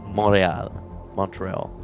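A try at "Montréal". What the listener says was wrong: You don't say the T if you're speaking French.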